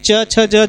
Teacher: तालु से दोस्तों आपका च वर्ग का सारा वर्ण बोला जाता है